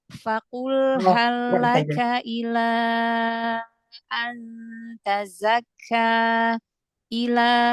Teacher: mad jaiznya dipanjangkan lagi empat atau lima harakat